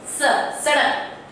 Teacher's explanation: स, ये जो स है ये दंत्य स है, स, सड़क। तो हमारा दांत के साथ जीवा स्पर्श करके निकलती है।